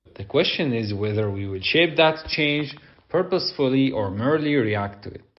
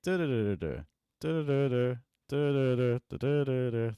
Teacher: You're just repeating the same pitch ranges over and over again. We're stuck in the mid. We're not using any high.